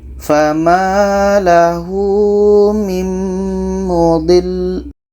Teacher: Di sini ketika kita berhenti ada lam yang ada tasydid. Maka cara bacanya adalah kita tekan lam ini.